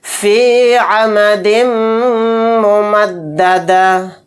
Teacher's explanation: یہاں پر میم کے اوپر تشدید ہے تو یہاں پر ہم غنہ کریں گے